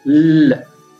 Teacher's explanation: the tip of the tongue touches the alveolar Ridge and air escapes through that both both like sides of the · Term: lateral